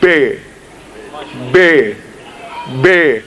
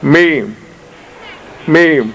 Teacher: یعنی بے لبوں سے ادا ہوتی ہے اور میم بھی. دیکھیں بے بے بے دونوں لب ملے، میم میم دونوں لب ملے، بے میم. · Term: شفوی